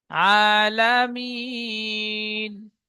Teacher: মিম ইয়াজের মি, নুন জবর না আছে, কিন্তু পড়তে হবে মিম ইয়া নুন জের মিন। নুন জাবারটি বাদ গিয়ে জাবারের পরিবর্তে সাকিন ধরে পড়তে হবে।